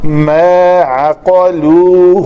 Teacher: ما عقلوه عین کو پتلا قاف کو موٹا